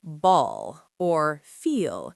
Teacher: You don't just touch the tip of your tongue to the top. The back of your tongue actually rises up almost like a G sound. It's a guttural sound. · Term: dark L